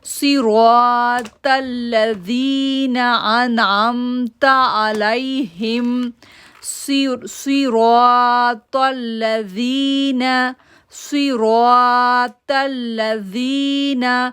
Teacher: صاد موٹا لیٹر ہے، را کو پورا آواز پڑھیں گے اور 2 سیکنڈ کے لیے کھینچیں گے بھی